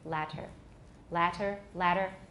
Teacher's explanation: If I turn the T into a tap, it's now voiced. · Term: voiced tap